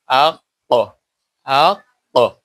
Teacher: আকসাই লেসান অর্থাৎ লেহাত বা ছোট জিহ্বা, ও তার সোজা উপরের তালুর কিছু অংশ, এখান থেকে বড় কাফ উচ্চারিত হয়।